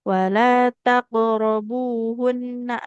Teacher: tasdidnya lebih lama lagi nunnya dia tetap ada aliran suara Suaranya sedikit.